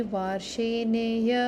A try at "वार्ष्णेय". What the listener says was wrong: No, it's varshneya. So this is a half. This is not full. Varshna. Like Krishna, varshneya.